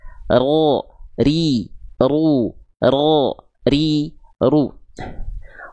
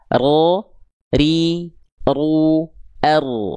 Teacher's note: getarannya sedikit saja, ya, sedikit saja, tapi tetap tegas dan jelas.